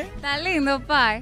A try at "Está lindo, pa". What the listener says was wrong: ¿Por qué tú estás poniendo una I al final?